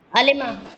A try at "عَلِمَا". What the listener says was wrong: تو پھر تو میم کو جو لام الفعل اس کو ساکن کیا آپ نے، علیمتا پڑھ دیا آپ نے.